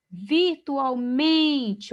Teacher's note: o men aqui é a sílaba mais forte, então paroxítona